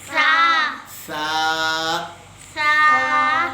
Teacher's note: زبان کی نوک اور یہ سامنے کے 2 دانتوں کے کناروں کے ساتھ یہ نوک لگے گی